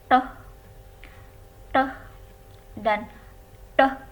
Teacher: retroflex bunyinya itu ketika pangkal lidah atau ujung lidah itu agak melengkung